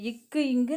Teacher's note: நாவின் முதல் அன்னத்தின் அடி